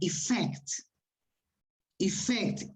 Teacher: Eso significa que la palabra la voy a acentuar en la segunda sílaba